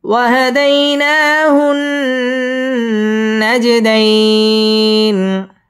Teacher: নাজে জিম কলকলার হরফ ধাক্কা দিয়ে পড়তে হবে।